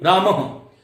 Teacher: अ है, तो इसका उच्चारण हम कंठ से करेंगे और ह की ध्वनि आएगी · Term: विसर्ग